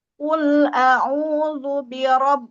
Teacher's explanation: Nah, di situ ada tasydid. ketika ditasydid ditekan sedikit untuk menandakan bahwa di situ ada dua huruf. Jadi jangan sampai diseret, jangan sampai ditahan ya kalau bukan huruf nun dan mim ya.